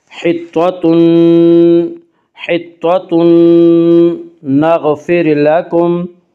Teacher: حطۃ نغفر لکم میں ادغام مع الغنہ ہوگا